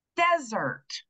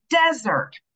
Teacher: that first syllable is getting the stress, okay? So we're gonna hear a nice clear vowel sound in that first syllable